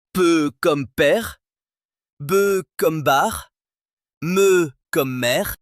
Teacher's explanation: Ainsi en français, s'il y a une obstruction des lèvres, on obtiendra un p sourd, un b voisé ou un me nasal.